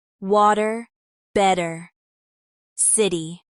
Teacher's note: In American speech, T often sounds like a soft D between vowels. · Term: flap t, flap T